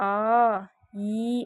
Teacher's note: நெடில் எழுத்து நீண்டு ஒலிக்கும். இப்போ வந்து ஆ, ஈ அப்படின்னு எழுத்து சொல்கிறோம்ல, அந்த செகண்ட் டைம் எடுக்கும்.